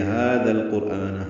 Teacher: ہا اقصی حلق سے ادا کریں گے، دو حرکات لمبا کریں گے ، ذال کو نرمی سے پڑھیں گے، لام سے ملائیں گے،